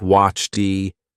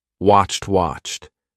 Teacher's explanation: when you have a CH and an ed it's going to be CHT